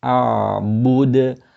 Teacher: your lips pushing out for the ba and then ending on the sukoon for the dal, which is a qalqala